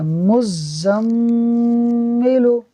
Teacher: اب یہاں ہم نے جس چیز کو توجہ میں رکھنا ہے وہ یہ ہے کہ میم مشدد ہے، اور میم مشدد ہو تو اس کے اندر غنہ ہوتا ہے، تو ہم نے غنہ کرتے ہوئے پڑھنا ہے